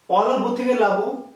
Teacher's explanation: স্বর লোপ পেয়েছে কোথা থেকে, লোপ পেয়েছে শুরু থেকে, এর নাম আদি স্বরলোপ